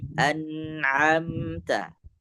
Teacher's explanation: A itu di pertengahan tenggorokan